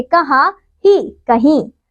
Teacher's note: हाँ लुप्त हो जाता है और अंतिम ई पर अनुनासिक लग जाता है